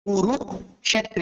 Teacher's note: ক কে ভেঙে মূর্ধন্য শকে আলাদা উচ্চারণ করতে হবে